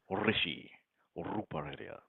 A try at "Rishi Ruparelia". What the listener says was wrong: roll with the R. Roll with your tongue, not your mouth.